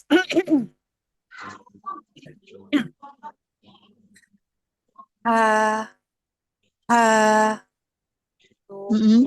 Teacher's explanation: makhrajul khususnya itu di tengah tenggorokan. Terus ee untuk dari su aliran nafasnya Hams. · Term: huruf H